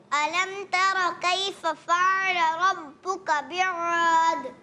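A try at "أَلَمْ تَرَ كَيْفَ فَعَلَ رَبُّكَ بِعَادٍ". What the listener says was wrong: موٹا بیعاد موٹا نہ ہو، بیعاد. عین بھی باریک.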